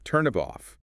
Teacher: The final consonant of one word links directly onto the initial vowel of the next. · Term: linking